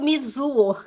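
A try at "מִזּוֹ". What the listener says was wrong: Não, Mizo. Seria Mizu se tivesse um Vav depois do Zayn com um pontinho no meio, tá? Mas isso aqui é só o Dagesh do Zayn, então ignora. Mizo.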